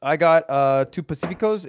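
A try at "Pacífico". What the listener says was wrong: Why don't you just say Pacifico? Why do you say Pacifico? It's Pacifico. You're adding an accent to it.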